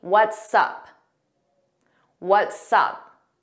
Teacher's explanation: So notice it sounds like one word and you hear that S on what's and sup. We put it in front of up.